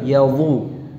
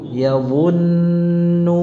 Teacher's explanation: Jadi tebalkan bunyi atau suara dha-nya.